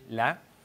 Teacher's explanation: L'ouverture du « est » en finale de mot, par exemple dans le mot « lait » prononcé « la », hein, donc avec l'ouverture qu'on trouve notamment au Saguenay.